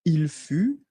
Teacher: Il fut, final T not pronounced